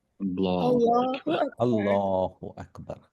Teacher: اللہ کا نام اور اس کے اوپر زبر آئے گا تو ہم اسے موٹا کر کے پڑھیں گے